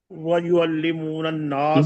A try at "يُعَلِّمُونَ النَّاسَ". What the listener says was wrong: نہیں واو نہیں ہے، یہ واو وہ پیچھے تھا. یعلمون الناس